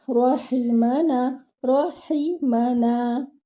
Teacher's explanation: Now here ra should be one count and heavy. Your ha should be from its makhraj and it should be given one count. Meme should be given one count and your noon here should be given 2 counts because it is with alif mad.